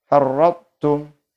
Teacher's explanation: Jadi cara membacanya memasukkan ta kepada ta tapi dengan tidak sempurna. Jadi ta-nya dibaca tidak dengan qalqalah, dibaca secara tipis saja, secara sekedar saja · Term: idgham mutajanisaini nakis